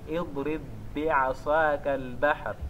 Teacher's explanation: levamos o primeiro ba e incorporamos no segundo